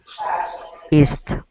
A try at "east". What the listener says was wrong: I think you didn't pronounce it long enough, but very